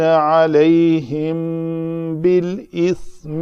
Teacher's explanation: میم ساکن کے بعد با ہے تو ہم یہاں کہیں گے یہ اخفائے شفوی کیا ہے ہم نے